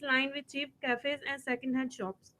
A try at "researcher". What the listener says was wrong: Researcher, the R in the beginning was not clear at all.